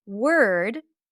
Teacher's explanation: you are likely to drop the o completely. So it sounds like you skip the o. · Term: stir sound